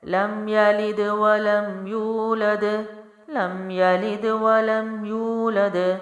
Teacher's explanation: ولم ہونٹوں سے، لام بھی باریک میم بھی باریک، یولد واو مد ہے کیونکہ پیچھے پیش ہے تو واو ساکن سے پہلے پیش ہو، ایک الف لمبا کرتے ہیں، ولم یولد، دال جو ہے پھر سے باؤنس کرے گا کیونکہ وقف ہے